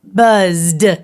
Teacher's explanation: is the base word of buzz and you touch your throat when you say buzz it vibrates quite a bit so it is a voiced sound therefore the ed will make a harder sound the d sound